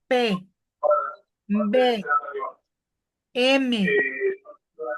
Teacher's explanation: se caracterizan porque los labios se tocan al pronunciarlos